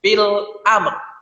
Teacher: Karena wakaf maka huruf ro juga harus disukunkan.